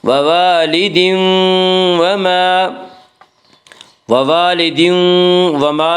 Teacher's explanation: وَوَالِدٍ وَمَا میں ادغام مع الغنہ ہوگا۔